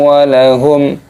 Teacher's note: Walahum, di sini ada mim sukun bertemu dengan huruf ain. Hukumnya dibaca idhar syafawi, jangan dibaca berdengung, harus dibaca jelas.